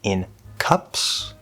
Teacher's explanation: The preposition in uses the front N.